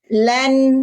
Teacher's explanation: Teman-teman, kita masih bunyikan izhar, kita belum waqaf. Berarti suara en-nya masih jelas.